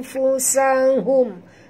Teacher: Nun mati bertemu fa, sorok dan dengung.